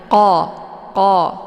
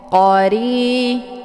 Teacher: Letak posisi huruf qa ini yaitu di pangkal lidah dekat dengan anak teka. Jadi saat melafadzkan, pangkal lidahnya naik ke atas tersentuh dengan langit yang lunak.